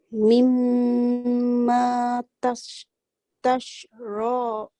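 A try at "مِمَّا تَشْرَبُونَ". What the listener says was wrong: Okey, tashra ni panjang sikit apa dia? Pasal ada waw. Sini pun panjang mimma.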